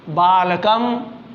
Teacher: म हलंत है, it means म में अ नहीं है, केवल व्यंजन है ये, तो जल्दी से बोलेंगे